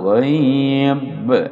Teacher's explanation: kalau berhenti terjadi qalqalah kubra mantul